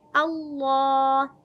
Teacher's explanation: हमज़ा को बारीक और हलक के आखिरी हिस्से यानी अक्सा हलक से अदा करेंगे।